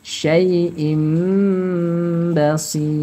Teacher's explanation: Nah, di sini kasih mim biasanya, kalau di mushaf yang lain ada di sini, ya. Ba, jadi suara nunnya, suara tanwinnya berubah menjadi suara mim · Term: iqlab